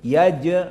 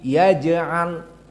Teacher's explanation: Kecuali jim di sini yaj, maka jim sakinah, dan dia hukumnya qalqalah as-sughra. Yaj'al, tidak yaj'al, tapi yaj'al.